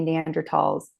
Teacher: Germans don't pronounce the th sound they pronounce it t so neander Valley neander talls there's there's no th sound anyways